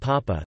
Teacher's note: In the common pronunciation of papa, the initial p is aspirated whereas the medial p is not.